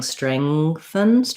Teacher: When I was modeling it before, obviously you noticed that I was saying strengthen. I was just going right from the NG into the TH